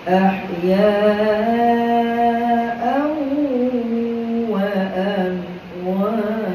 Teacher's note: dekat aw tu tadi idgham ma'al ghunnah, kena dengung